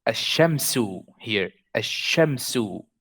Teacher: If you see how I am saying it, I'm going from alif a to sheen. I did not say al-shamsu. I said ash-shamsu. That means that the lam is silent here.